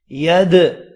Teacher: ید دال ساکن ہے، اس پر بھی قلقلہ کیا جائے گا